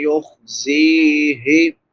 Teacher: زا سختی سے ادا ہوگی۔ سیٹی والے حروف میں سے ہے، تین حروف جو سیٹی کے ساتھ ادا ہوتے ہیں، زا، سین، صاد۔